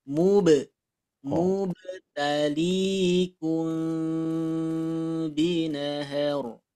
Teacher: Nah, ini baknya ada pantulannya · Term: qalqalah